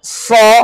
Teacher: nggak boleh monyong karena fathah ucapannya hanya dengan membuka